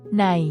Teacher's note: that translates to in or inside is pronounced with a midtone it's a straightforward level sound without any rise or fall in Pitch throughout its duration